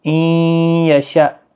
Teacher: ان یشأ، نون ساکن کے بعد یرملون کا یا ادغام مع الگنہ ہوگا، گنہ کے ساتھ پڑھیں گے۔ حمزہ ساکن کو جھٹکے کے ساتھ پڑھا جاتا ہے